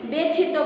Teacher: শব্দের প্রথমে জফলা থাকায় এবং এরপরে রস্যইকার থাকায় সেই জফলাটা এখানে কি হয়ে গেছে একার হয়ে গেছে